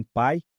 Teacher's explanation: o I é uma semivogal, pois tem um som mais fraco que o A